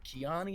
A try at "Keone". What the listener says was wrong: Oh, Keone. It's a long O.